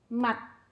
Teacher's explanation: có âm cuối t khi đọc đầu lưỡi cong lên chạm vào vòng trên của miệng